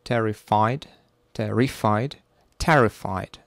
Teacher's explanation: so terrified, the first syllable is stressed.